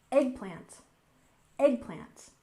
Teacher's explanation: And next we have eggplant. We stress the first syllable, eggplant, eggplant.